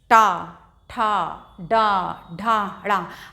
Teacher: अब टा, ठा, डा, ढा, ड़ा, आपने महसूस किया होगा इनको बोलते समय जो जिह्वा है वो थोड़ा फोल्ड होके और तालु के और ऊपर, तो जो तालव्य से ऊपर का स्थान होता है हमारे मुख के अंदर, वो बोलते हैं उसको मूर्धा या मूर्धन्य। तो हमारी टंग फोल्ड करके मूर्धा का स्पर्श करती है जब हम इन वर्णों का उच्चारण करते हैं